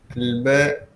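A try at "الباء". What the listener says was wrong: Anta hidupkan baris akhir biar tahu huruf apa terakhir.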